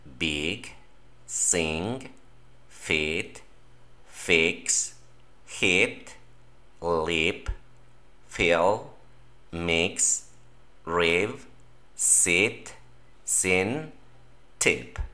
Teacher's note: Es una I corta diferente a la que nosotros tenemos en español.